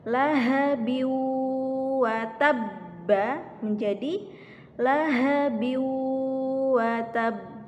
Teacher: Jadi ketika ada huruf tersebut itu bertasydid, huruf qalqalahnya itu bertasydid, maka cara membacanya ditahan sejenak lalu dipantulkan